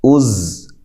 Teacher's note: حمزہ زبر زا، از، اب دیکھیں یہ حروف قلقلہ میں سے نہیں ہے، اس کو ہلانا نہیں ہے، از نہیں، از، ٹھیک ہے؟ سیٹی کے ساتھ، زا، زا، سین، صاد، یہ 3 حروف سیٹی والے حروف ہوتے ہیں